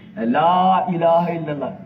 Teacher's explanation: لا الہ الا اللہ میں جتنے حروف ہیں ایک بھی شفوی نہیں ہے